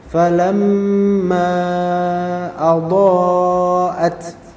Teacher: Mim di sini bergunnah karena dia tasdid. Maka falamma keluar dari khaysum makhrajnya.